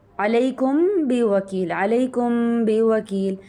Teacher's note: تو یہاں پہ ہم نے میم کے ساؤنڈ کو ہم نے ناک میں چھپا دیا اخفا کر دیا اس کو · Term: اخفا شفوی